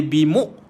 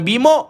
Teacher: Hamzah disukunkan maka bunyi dia bimuk bukan Bim